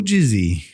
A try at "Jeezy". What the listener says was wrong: Jeezy. Jeezy, not Jizzy. Jeezy. You said Jizzy.